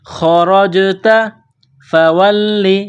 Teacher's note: جیم ساکن ہے تو جیم پر قلقلہ کریں گے. خرجت فولی، لام کو دبانا ہے تشدید کی وجہ سے، جیم پر قلقلہ کریں گے